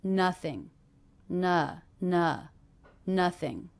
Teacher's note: after what about the word nothing again it's the first syllable ing endings even though this isn't an ing verb will be unstressed